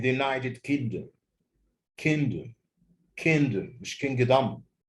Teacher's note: United the stress is on the second syllable